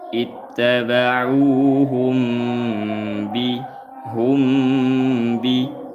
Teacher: Mim sukun bertemu ba, hukumnya ikhfa syafawi. Dibaca dengan dua harokat serta samar.